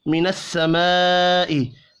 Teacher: बड़ी मद को 5 अलिफ के बराबर खींच कर पढ़ेंगे